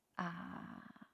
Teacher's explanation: we pronounce ah very low here and then we go up ah uh uh ah the second tone just go up directly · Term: third tone